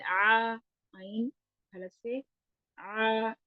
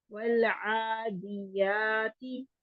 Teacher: वल वल आदियाती, वाओ के लिए होंठों को गोल करना है। वल वल आइन हलक से आ, 2 हरकत के बराबर, क्योंकि इसके ऊपर खड़ी जबर है। वल आदियाती, यहाँ पे भी 2 हरकत, यानी आइन और या बराबर होंगे, दाल और ता बराबर होंगे।